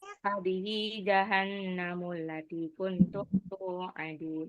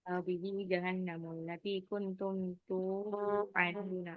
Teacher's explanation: Dalnya jangan digabung. Dal sama waw nggak bisa gabung.